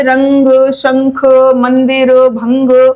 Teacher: और जब इनका उच्चारण आप करते हो तो स्वर निकलता है नासिका से तो जैसे रंग तो यहां नासिका से स्वर उच्चारण होता है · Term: अनुस्वार